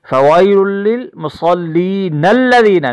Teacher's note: اور اگر ہم ملا کے پڑھیں گے تو ہم یوں پڑھیں گے فوائل للمصلین الذین نون کو ہم لام سے ملائیں گے